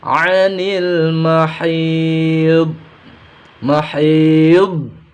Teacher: Huruf dod makhrajnya pinggir lidah terkena gigi geraham atas.